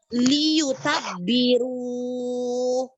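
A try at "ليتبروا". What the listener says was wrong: Ru-nya panjang sekali. Cukup 2 harokat. Waliyutabbiru. Wa. Ada wa-nya sayang.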